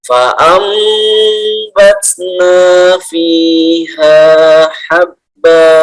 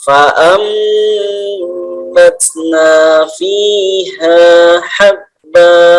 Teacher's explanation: Nah, inilah tanda mim di atas ini, ya, menunjukkan bahwa nun ini harus dibalik, ya. Dibalik jadi mim.